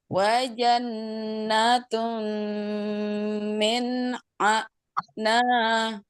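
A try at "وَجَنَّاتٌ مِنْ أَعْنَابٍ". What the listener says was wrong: Nunnya kurang nung di sini. Ini omong-omong berhentinya ada huruf ba, berarti berhentinya di ba ya.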